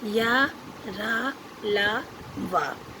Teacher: ये स्वर और व्यंजन के बीच स्थित है। उच्चारण के समय जिह्वा मुख के किसी भाग को स्पर्श नहीं करती।